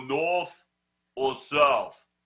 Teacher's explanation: see that th makes a f sound